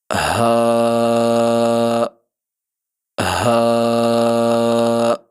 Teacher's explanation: اس کے بعد اگلا حرف ہا۔ زبان کی جڑ کو حلق کی طرف دبائے بغیر اور باریک آواز میں اور رگڑ کے بغیر اس آواز کو ادا کریں گے۔